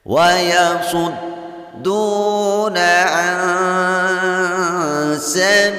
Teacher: Membacanya dipanjangkan 2 harkat karena ada waw sukun diawali baris dhammah pada huruf dal. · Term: matabi'i